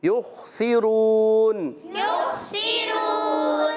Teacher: خا کو موٹا کر کے پڑھیں گے · سین کو باریک رکھیں گے، را پر پیش ہے، را کو پر پڑھیں گے